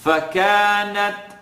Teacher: you're hearing a little click, or a pop rather in this case, on the ta